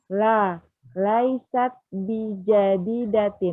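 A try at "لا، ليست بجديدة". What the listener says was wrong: Nih, sahih.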